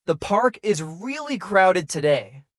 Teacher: the falling tone at the end makes it clear this is a comment not a question